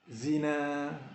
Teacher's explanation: Jadi di sini walaupun kita tidak nampak ada alif yang sebenar, tapi ada satu tanda tegak seperti mana yang dinyatakan tadi yang mewakili alif. Maka kita kena berhenti dalam keadaan mengekalkan mad pada kalimat ini dengan kadar 2 harakat, iaitu mad asli.